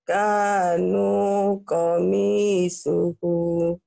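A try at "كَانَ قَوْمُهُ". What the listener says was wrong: kana bukan kanu ya. Tapi nanya pendek. Kana kanya panjang.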